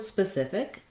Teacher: of the way it's spelled and the letters in this word in the word specific the second syllable is stressed so the sith syllable has the stress that's here in these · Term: syllable stress